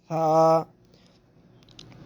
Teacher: رکھتے ہی آپ لفظ فا ادا کریں، فا۔ تو آگے مزید اس کو لمبا بھی نہیں کرنا اور سیٹی بھی نہیں بجانی، اس کو موٹا بھی نہیں کرنا